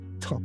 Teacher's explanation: Alveolar لثوی ها, alveolar ridge, تیغه لثه, such as t. Tongue tip against alveolar ridge.